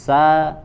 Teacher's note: makhrajnya sama yaitu ujung lidah ditempelkan ke apa Pangkal gigi seri bagian bawah ya tetapi sifatnya yang dibedakan kalau Sin itu tipis sa ya